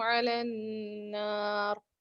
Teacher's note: جی یہاں پر علی النار میں جو ہے نون مشددہ ہے اور یہاں غنہ کریں گے